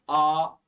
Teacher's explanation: मैंने सबसे पहले आ बोला, अब देखो बोलो आ। अब आ बोलते जीभ पीछे की ओर खींच रही है। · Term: पश्च स्वर